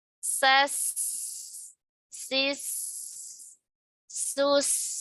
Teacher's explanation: Lama ya. Suaranya jangan sampai terpotong karena dia rokhawah.